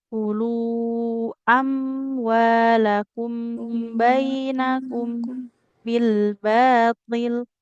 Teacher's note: lam sukun dengan mim sukunnya dia jangan sampai bunyinya memantul